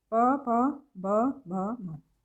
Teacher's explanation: तो होठ आपस में टच करते हैं इसमें, इसलिए ये औष्ठ्य व्यंजन कहलाते हैं। इनका उच्चारण होता है, उच्चारण स्थान कौन सा है इनका, होठ।